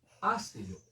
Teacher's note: Es clarísimo que el acento recae en la antepenúltima sílaba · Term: palabra esdrújula